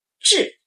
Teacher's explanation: And fourth tone, sharp drop